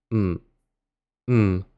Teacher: The first is the word for not. We write it just as the letter M in Pinyin, but it's actually a low falling tone.